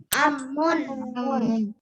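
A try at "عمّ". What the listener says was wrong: Ammun. Baik, pakai ain ya. Pakai ain bukan pakai a, pakai ain.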